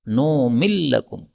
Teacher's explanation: Nun ketemu dengan lam ini bisa idgham menjadi numillakum